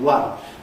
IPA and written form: wʌn (one)